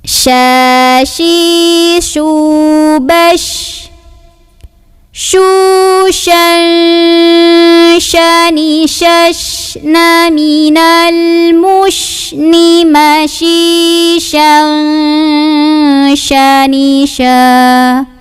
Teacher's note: Huruf shin ini keluar dari tengah-tengah lidah bertemu dengan langit-langit tengah. Ya. Nah, kemudian suaranya mengalir rokhawah, ada anginnya juga, hamas, dan punya ciri khas namanya tafashi.